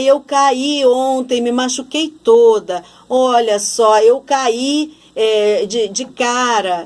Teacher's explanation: esse cair, quando é passado, eu vou pronunciar com mais força o i. Então, nesse caso, eu vou acentuar o i.